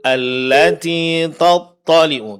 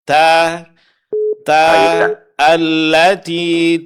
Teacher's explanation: Huruf ta tetap tipisnya dipertahankan. Allatiu t bukan thu.